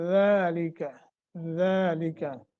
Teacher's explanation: ज़ुबान की नोक सनाया उलिया की जड़ के साथ जब लगती है तो ज़ालिका का मखरज अदा होता है